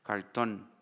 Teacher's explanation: Polimorfismo de R y R en posición implosiva que incluye una articulación retrofleja